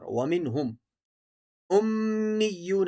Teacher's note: اس آیت میں وَمِنْهُمْ کے نون پر غنہ نہیں کیا جائے گا، کیونکہ نون ساکن کے بعد ہا ہے، یہاں اظہار ہوگا، غنہ منع ہے یہاں پر۔ وَمِنْهُمْ امیون، حمزہ کو میم کے ساتھ جوڑنا ہے، میم کو یا کے ساتھ جوڑنا ہے، امیو اور یا واو پیش یو، کیونکہ واو ساکن سے پہلے پیش ہے تو واو مدہ ہے، ایک الف کے برابر کھینچ کر پڑھیں گے۔